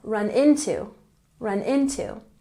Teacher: into has the emphasis on the first syllable